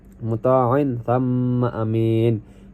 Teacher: Kemudian ayat 21 muta'in thamma amin, sini ada muta'in sini dibaca gunnah karena huruf mim dibaca dengung karena tasydid. Dan ada amin sini dibaca matobi'i karena huruf ya-nya dibaca 2 harokat.